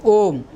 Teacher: पुलुत जैसे ओम, त्रिमात्रिक स्वर